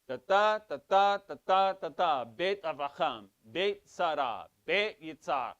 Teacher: So in Hebrew, in Sephardic Hebrew, it will be on the final syllable